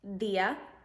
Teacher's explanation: in order to make the sound place your tongue against your upper teeth